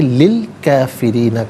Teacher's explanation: کافرین میں را کے نیچے زیر ہے، را کو باریک کر کے پڑھا جائے گا